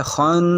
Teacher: اسے کہتے ہیں غنہ، آواز ناک میں جا رہی ہے